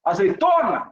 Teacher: O que soa mais forte? Não foi a penúltima sílaba? Então ela é paroxítona.